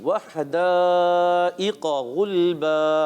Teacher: दाल को बारीक रखना है और काफ को पुर करेंगे जी।